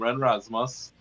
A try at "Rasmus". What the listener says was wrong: You're wrong again. The man said the R is silent. It's Asmus. It's Asmus.